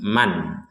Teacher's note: Ada nun sukun bertemu hamzah, maka kita membaca dengan jelas.